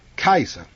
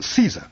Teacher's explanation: In Latin it's pronounced like Kaiser, with a hard C, but we anglicize it by pronouncing a soft C.